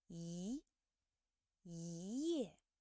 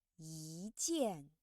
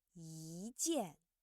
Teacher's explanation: So character yi, we just need to change the first tone to the second tone.